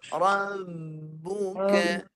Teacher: Okey, kita cuba ada ringankan bibir. Rabbuka sampai masa nak sebut ba mati tu bibir tu bergerak. Sebab kita menahan suara kat situ dia bergerak bibir tu.